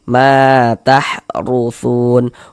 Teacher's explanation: Kalau ada alif yang sebelumnya ada harakat fathah atau tanda baca fathah, maka huruf yang memiliki tanda baca fathahnya dibaca panjang. Sehingganya ma dibaca panjang. Mad thobi'i panjang dua harakat. · Huruf ra memiliki harakat domah. Tadi dibaca tebal dibaca tapkhim. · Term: tafkhim